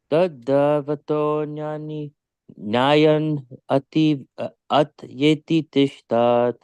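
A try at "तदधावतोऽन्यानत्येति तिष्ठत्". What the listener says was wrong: Tadavatonyan atyeti. Wait, that's a long A.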